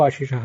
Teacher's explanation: ಆಶಿಷಃ ಅಂತ ಅನ್ನುವಲ್ಲಿರೋದು ಮೊದಲನೇದ್ದು ಶಂಕರ ಶಕಾರ, ಆಮೇಲೆ ಬರುವಂಥದ್ದು ಷಣ್ಮುಖ ಶಕಾರ. ಮೊದಲನೇದು ತಾಲವ್ಯ ಶಕಾರ, ಆಮೇಲೆ ಬರುವಂಥದ್ದು ಮೂರ್ಧನ್ಯ ಶಕಾರ.